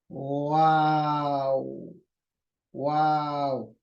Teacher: जबान नीचे ही रहेगी, जबान का कोई इस्तेमाल नहीं, दांतों का कोई इस्तेमाल नहीं, हलक का इस्तेमाल नहीं, सिर्फ होठों का। वाओ, वाओ। बहुत से लोग क्या करते हैं, वी की साउंड करते हैं, वाओ, यानी वो लोग क्या करते हैं, ये जो जबान का जो ऊपर के दांत है उसको नीचे के होंठ को लगाते हैं, वी साउंड, वाओ।